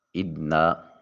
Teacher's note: نون مشدد ہے، غنہ واجب ہوگا۔ ادنا منہ کھلا کر کے ادا کریں گے۔